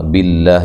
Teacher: آ الف مدہ کے قائم مقام، مانا دونوں کو لمبا نہیں کرنا۔ باللہ، لفظ اللہ کو باریک پڑھنا ہے، اس سے پہلے زیر آ گئی ہے